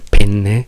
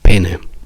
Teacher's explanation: noi non sentiamo la differenza tra una doppia N e una singola N. Se però noi a voi diciamo pene invece di penne, vi mettete a ridere, siete scandalizzati, ci prendete in giro e probabilmente non capite proprio neanche quello che sta succedendo.